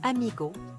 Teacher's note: Remarquez le son doux du G et les voyelles I et O claires.